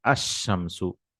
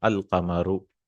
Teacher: Huruf Shamsiya, sun letters, are those where al comes to it. You don't pronounce the lam, like ash-shamsu, the example itself. So we say ash-shamsu. And in Qamar, we'll pronounce the lam, al-qamaru.